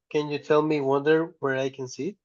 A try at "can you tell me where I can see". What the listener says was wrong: wonder I think is not correct over here uhhuh can you read it again